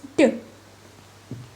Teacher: D is a voiced dental or alveolar stop. It is like T or T but with vibration of the vocal cords D.